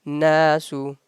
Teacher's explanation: We are holding that noon sound for 1 second. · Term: gunna